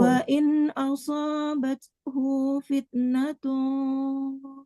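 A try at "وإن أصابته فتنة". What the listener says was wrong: Bukan natum, nun kecil, ada nun kecil di bawah.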